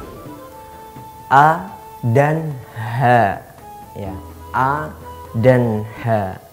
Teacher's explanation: A dan ha itu huruf yang ada di bagian bawah tenggorokan. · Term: hamzah dan ha